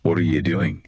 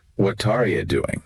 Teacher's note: See if you can hear how what and are blend together. It often ends up sounding more like what Taria doing. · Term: linking